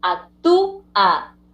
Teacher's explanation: Tenemos ahí una vocal cerrada acentuada separándose de la vocal abierta.